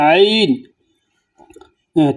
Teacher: যখন আপনি আইন উচ্চারণ করার চেষ্টা করবেন বা উচ্চারণ করতে চাইবেন, তখন গলার মধ্যে গলার নিচের দিকে একটু দিবেন, শক্তভাবে আওয়াজ দিবেন, তাহলে আইন উচ্চারিত হয়ে যাবে। যেমন আইন, তারপর গইন, গইন অনেকে গাইন বলে, গাইন নয়, গইন।